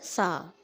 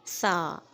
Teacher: ज़ुबान की नोक को दोनों दांतों के दरमियान रखो और नरमी से अदा करो सा। Put your tip of your tongue between your teeth and से सॉफ्टली सा।